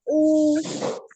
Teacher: Harokat dhammah ya, yaitu merupakan harokat yang berbentuk seperti waw kecil yang berada di salah satu di atas salah satu huruf hijaiyah dan berfonem U. Diucapkan dengan cara memajukan kedua bibir dengan sempurna.